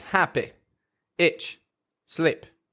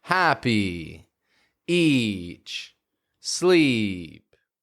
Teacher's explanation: we've got to make your voice come out longer, as if there's a little tail on the end of that E. Happy, each, sleep. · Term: E sounds